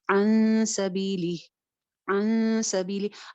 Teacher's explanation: پھر سے ہم اس کو چھپا کے پڑھیں گے، اور سین کیونکہ موٹا حرف نہیں ہے تو اخفا باریک رکھیں گے